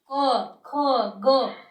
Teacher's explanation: छूना, अर्थात जब अपन इनको बोलेंगे उस समय हमारी जिह्वा जो है वो कहीं ना कहीं मुख में स्पर्श जरूर होगी। जैसे कै वर्ग अगर अपन बोलते हैं तो कंठ पर जोर पड़ता है, अपने कंठ से ध्वनि आती है इनकी